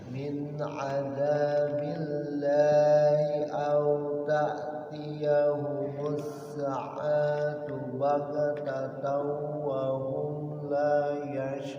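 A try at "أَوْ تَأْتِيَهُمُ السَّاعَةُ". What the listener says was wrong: sekali lagi dari au ta'tiyahumus sa-nya panjang.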